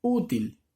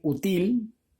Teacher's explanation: hace mayor fuerza de voz en la U